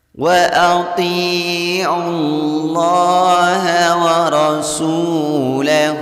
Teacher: Warasul di sini ada waw sukun diawali baris dhammah pada huruf sin. Hukum bacaan maqtabi'i dipanjangkan membacanya 2 harokat saja. · Ini hukum bacaan maqtabi'i, membacanya bunyi ta-nya dipanjangkan 2 harokat. Kemudian lafaz Allah di sini dibaca dengan tebal, artinya dibaca Allah, tidak dibaca lah, karena sebelum huruf lafaz Allah berharakat dhammah.